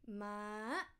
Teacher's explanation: means Grandma next one the same word but with high tone so high tone is from mid straight and up high